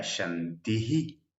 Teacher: Ahora, cuando esta palabra o cuando el bisarga está al final de una frase, generalmente tiene un eco de la vocal anterior. Entonces hay que concentrarse en cuál es la vocal anterior, en este caso una A, y proyectarla hacia adelante.